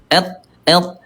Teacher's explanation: dari segi suara dia syiddah dia kuat suaranya tertahan enggak bisa lanjut